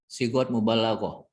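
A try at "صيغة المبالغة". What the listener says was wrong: sigha sighatul mubalaghah. Karena tak marbuto kan ketika disukun kan jadi ha kan. Sigha gitu ya. disukun jadi tak, nggak ada sigot gitu. sigot ya dilanjutin sighatul mubalaghah gitu. Sighatul mubalaghah. Sigha mubalaghah.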